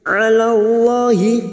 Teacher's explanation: huruf ain jangan samakan dengan hamzah. Ain yang memiliki sifat tawasud dan jahar.